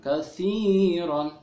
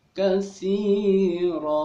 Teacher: Nah, yang tadinya dibaca kathiron tidak kathiron lagi, tidak dibaca en lagi, tapi dibacanya panjang 2 harakat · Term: mad iwad